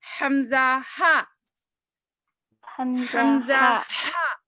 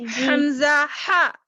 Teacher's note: اقصائے حلق سے بول رہے حمزہ ہا، حمزہ ہا، اندر سے آواز آ رہی، محسوس کر رہی، حمزہ ہا، جو سینے سے قریب ہے حلق، وہاں سے آواز نکل رہی اس کی، حمزہ ہا۔ اور وسط حلق عین ہا، عین ہا، بیچ میں سے، بیچ حلق سے آواز آ رہی ہے، وسط بولتے بیچ کو، درمیان کو، دونوں کے بٹوین بولو، عین ہا، عین ہا۔